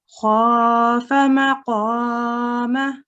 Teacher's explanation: because this fatha letter is followed by an alif, we prolong it for 2 seconds